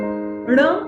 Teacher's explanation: ऐकायला येतो ण आणि न यांच्या उच्चारातला फरकही नीट समजून घ्या जेव्हा आपली जीभ ण असा उच्चार करते तेव्हा तिचं टोक हे टाळूच्या मागच्या बाजूला म्हणजेच मूर्धेला लागतं